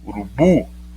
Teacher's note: Urubu, sílaba tônica bu, mas não tem acento.